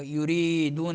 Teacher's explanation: یریدون را باریک پڑھیں گے اور یا مدہ ہوگا